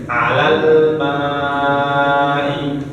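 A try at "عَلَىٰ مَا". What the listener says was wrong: Tadi masih kedengaran alal. Nah, masih kurang pas. Alal ma'i.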